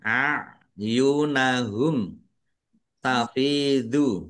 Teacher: Mim sukun bertemu dengan huruf ta. Bacaan izhar syafawi dibaca jelas.